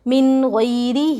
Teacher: نون ساکن کے بعد حروف حلقی میں سے غین آ رہا ہے، نون کی آواز کو ظاہر کر کے بلا غننے کے جلد پڑھیں گے · ہا کے نیچے کھڑی زیر، حروف مدہ تھوڑا کھینچ کر پڑھیں